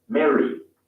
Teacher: the A is followed by a double R, in which case the vowel is pronounced as E in the US.